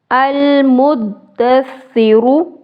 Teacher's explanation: दाल को 2 दफ़ा पढ़ेंगे, सा को भी 2 दफ़ा पढ़ेंगे क्योंकि आपको पता है शद वाले हरफ को 2 मरतबा पढ़ते हैं, 1 मरतबा पिछले हरफ से मिलाकर, 1 मरतबा खुद जो उसकी हरकत होती है उसके साथ।